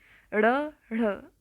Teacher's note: उसे कहते हैं उत्क्षिप्त व्यंजन ड़ ढ़ आप बोल के देखिए आपकी जो जीवा है ना वह उल्टी होके तालू को टच करेगी